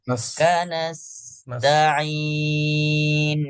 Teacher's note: Hamas huruf sin dibiarkan desisnya keluar dulu.